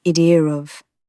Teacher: Intrusive R is even cheekier. Londoners sometimes add an R where there's none written, like an idea of sounding like idier of